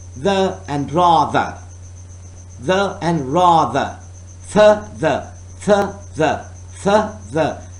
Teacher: Air is forced through upper teeth and tongue. It is a dental sound.